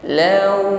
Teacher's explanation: ya huruf Lin yaitu Waw sukun yang sebelumnya ada harakat fathah Law di situ harful Lin kita ucapkan dengan ringan ya landai tanpa ada penekanan